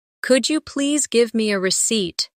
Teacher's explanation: Emphasize receipt so it's clear.